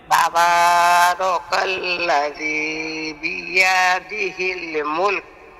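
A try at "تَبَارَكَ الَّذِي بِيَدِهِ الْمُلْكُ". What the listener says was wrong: এই তো হয়েছে, মাশাআল্লাহ।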